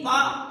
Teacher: अब पा को आप बिना होठ के मिलाए उच्चारण कर ही नहीं सकते। पा में जितने भी वर्ण आते हैं, इनको आप बिना किसी भी प्रकार के होठों को बिना मिलाए आप नहीं बोल सकते, इसीलिए इनका नाम होस्ट में आता है।